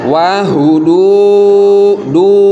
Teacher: Panjangnya pakai banget. Panjangnya selama 6 harokat. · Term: mad jaiz munfasil